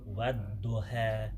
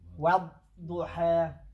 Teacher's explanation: The wow is smiling, but the letter da is full mouth.